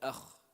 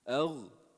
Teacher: What's the difference? Kha has hams, so it becomes kh. But in the same makhraj, if you remove the air, it becomes gh